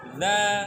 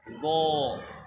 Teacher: Dha itu dia istifal kan, sementara dho isti'la, bunyinya beda.